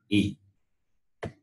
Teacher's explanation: the sound is produced from the palate the tongue touches the palate and the sound is produced the sound is represented in this